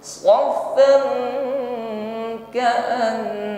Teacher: mim sukun berhadapan dengan ba, ikhfa syifawi, ya, bibir rapat